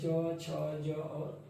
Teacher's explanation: स्पर्श संघर्षी कहलाता है। माने छू करके भी निकलेगा और उसको बोलने पर संघर्ष भी होगा।